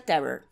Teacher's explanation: Então a gente tem R na garganta, R na boca e R na frente da boca. Esse R que a gente tá falando é o da boca, o do meio da boca. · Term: R do inglês